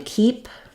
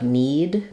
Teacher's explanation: we don't hold that E quite as long as we would in a word like need because the P sound is voiceless. So when we have a voiceless sound at the end, we tend to have a shorter duration vowel.